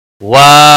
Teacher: وا الف مدہ ہے ایک الف کے برابر کھینچ کر پڑھیں گے